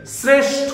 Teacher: তালবস্যর সঙ্গে রফলা আছে, তাই উচ্চারণের সময় তালবস্যটা দন্তস্ব হয়ে যাবে। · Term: দন্তস্ব উচ্চারণ